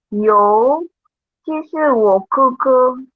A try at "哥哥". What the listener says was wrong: They all say 哥哥弟弟. They don't repeat tones because it's more intimate. 不是克哦，不是 K 哦，是 G。哥哥 OK. 哥哥对啦 It's in the throat here, not K, 是 throat here.